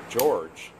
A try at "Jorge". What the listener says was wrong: That's Jorge. In Spanish, the J is silent. It comes off as H.